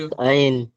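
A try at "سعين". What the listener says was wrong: জি হুজুর, টান নেই এখানে, টান দেন। তাহলে আপনি টানগুলো একটু বেশি বেশি দেবেন, ঠিক আছে।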